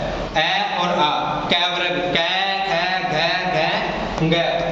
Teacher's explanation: अ और अ क वर्ग क ख घ घ ग और विसर्ग इनका उच्चारण स्थान तो होता है कंट